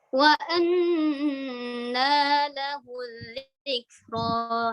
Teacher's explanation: kalau kita murotal, terus ini sudah ayat terakhir, turunkan nadanya